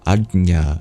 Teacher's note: A J next to a palatal nasal sound